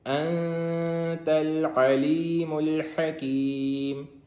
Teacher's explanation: نون کے اوپر ساکن ہے جس کی وجہ سے یہاں پہ اخفا ہوگا، اور آگے عین ہے، علیم، عین، حکیم، ہا ہے حلق والی، اس کو حلق سے نکالیں گے۔